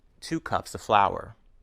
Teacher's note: The Vow in of is reduced to the very short weak vowel ah